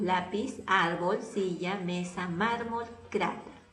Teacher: la grave va a estar en la posición 2, penúltima sílaba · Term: palabras graves